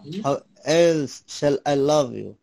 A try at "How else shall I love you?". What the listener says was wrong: How else মানে একটু কণ্ঠটা ঠান্ডা করেন। else shall I love you? How else shall I love you?